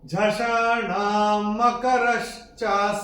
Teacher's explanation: तीसरे चरण में णा के ऊपर अनुस्वार के बाद का अक्षर है म, और अनुस्वार के बाद जब म आएगा तो अनुस्वार का उच्चारण म ही होगा